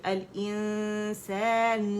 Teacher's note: یہ لام جو ہے اس کا اظہار ہو رہا ہے کیونکہ یہ لام قمریہ ہے